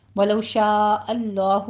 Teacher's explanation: ولو شاء اللہ میں شاء پہ 5 کاؤنٹ کرنے ہیں، مد متصل واجب ہے. لو میں واولین ہیں، دونوں ہونٹوں کو ناتمام گول کرتے ہوئے ادا کیجیے اور شاء کی مد متصل واجب کو 5 حرکتوں برابر کھینچ کر پڑھتے ہوئے آگے لفظ جلالہ کو پر پڑھنا ہے.